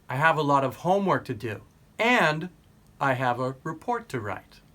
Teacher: you can use a rising intonation when you use and.